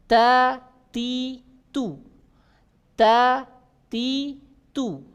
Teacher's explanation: Keluar dari ujung lidah menyentuh pangkal gigi seri atas. Pangkal gigi seri atas.